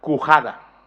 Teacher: sale la variante dialectal cujada, por efecto de una contracción debido a la caída de la consonante intervocálica G